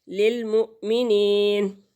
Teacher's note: یا مدہ ہے، ایک حرکت کے برابر کھینچ کر پڑھیں گے اس کو